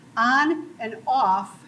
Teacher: on and off have merged in the speech of younger people and it's still separate in the older people it's also separate